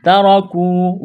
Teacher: تا کو باریک کرنا ہے، را کو موٹا کرنا ہے، جلدی پڑھیں گے